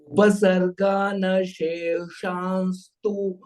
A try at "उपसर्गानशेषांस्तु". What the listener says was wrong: Sheshan has come? Sheshamstu.